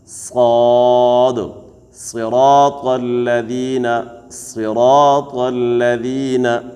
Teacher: دا درې حروف صاد زا سین دي کې د شپېلې آواز کېږي